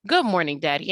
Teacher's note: When you say morning, that or sound stretches through the whole syllable. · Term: long sound